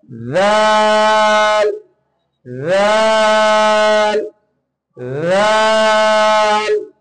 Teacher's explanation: আলতো করে জিহ্বার আগা এবং উপরে দুই দাঁতের আগার সঙ্গে আলতো করে লাগাতে হবে।